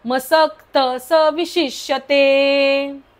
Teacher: मसक्तचा विसर्गाचा उच्चार आपण करायचा नाही कारण पुढे स आहे म्हणून.